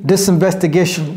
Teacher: elle a fait la liaison entre le S et le I.